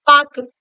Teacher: ஆனா பாக்குன்னு சொல்லும்போது மட்டும் அந்த கூ அப்படிங்கறது க் அப்படின்ற மாதிரி முடிஞ்சிடும். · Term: குற்றியல் உகரம், குற்றியலுகரம்